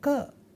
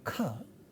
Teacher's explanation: The distinction between ka and kha is in terms of aspiration. This H marks aspiration, which simply means little bit extra flow of air.